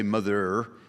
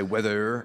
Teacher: a genuine northern accent involves the rhotic R, which is the hard pronunciation of the letter R at the end of a word